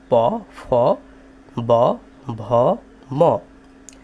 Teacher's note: তাহলে আমরা যদি প উচ্চারণ করি তাহলে আমাদের ঠোট দুটি এক জায়গায় হয়ে যায়। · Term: অষ্ঠ